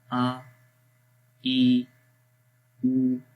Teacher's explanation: حمزہ زبر آ، لمبا نہیں کریں گے، نہ ہی جھٹکا دیں گے